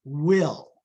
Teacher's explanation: you have both the lips and the Velar region where you are articulating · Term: double articulation